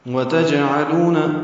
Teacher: جیم ساکن پہ قلقلہ ہے، عین وسط حلق سے ادا کریں گے